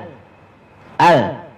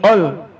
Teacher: A bertemu dengan lam mati bunyi al. Al bukan bunyi ol.